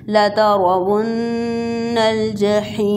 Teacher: را کو موٹا پڑھنا ہے اور نون مشدد ہے، اس پر 2 سیکنڈ کے لیے غنہ کریں گے